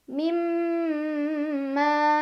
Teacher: Ada gunnah musyaddadah karena ada mim yang bertasydid. Cara bacanya didengungkan, ditahan kurang lebih 2 harokat.